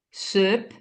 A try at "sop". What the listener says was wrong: No, perché söp, c'è una dieresi lì? No, c'è un bel... Che Zoppo.